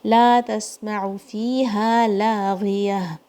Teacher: ہا کی آواز حلق کے سب سے نیچے سے آئے گی